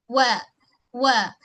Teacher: Wa wa wa muncung kedua mulut kita kemudian tarik balik wa. Okey sebab makhraj wau memang kena muncungkan kedua bibir mulut · Pastikan bunyi nipis pada huruf wau dan satu harakatlah.